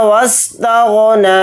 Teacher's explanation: تا کو غین ساکن کے ساتھ ملا کر پڑھیں گے، نون کے اوپر کھڑا زبر ہے، نون کو تھوڑا کھینچ کر پڑھیں گے، ایک الف کی مقدار